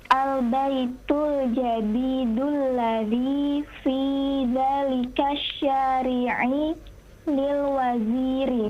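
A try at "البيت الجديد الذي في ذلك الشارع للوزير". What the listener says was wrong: Naam, sahih. Sekarang baru sahih.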